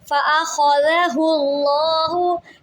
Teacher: اللہ کے لام سے پہلے پیش آ رہا ہے تو اس کو پر پڑھیں گے۔